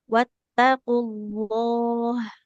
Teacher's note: wa wattaqullah Nah, jangan wattaqullah. Lafaz Allah lamnya tebal.